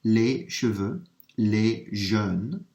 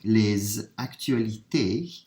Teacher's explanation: I'm running that S sound in with the A because it starts with a vowel. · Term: liaison